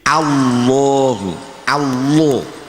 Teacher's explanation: dibaca tafkhim berarti agak dimoncongkan menjadi Allahu